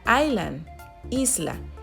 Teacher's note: la S es muda en la palabra island